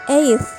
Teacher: In the word eighth, the influence of final dental sound results in the dental articulation of T sound